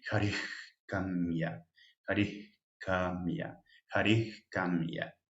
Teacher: Entonces, por ejemplo, tenemos esta palabra. Tenemos el bisarga antes de K, tiene un sonido velar, el de la garganta, como comido ahí.